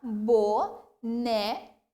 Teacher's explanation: Pronunciei com mais tonicidade o né. Então, essas 3 palavras são paroxítonas porque a penúltima sílaba é pronunciada com mais tonicidade.